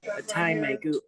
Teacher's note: Don't forget to nasalize the last syllable.